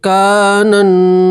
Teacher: کاف کے ساتھ الف مدہ ہے، اس لیے الف کے برابر کھینچیں گے